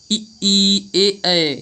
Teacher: ई ए, ये हमारे जीव के आगे भाग से बोले जाते हैं, इसलिए अग्रस्वर होते हैं।